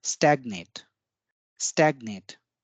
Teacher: स्टैग्नेट में जो पहला ए है उस पे ज्यादा बल था